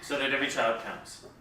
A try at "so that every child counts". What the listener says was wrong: you're saying it like it's a question, so that every child counts. We don't want you to say counts.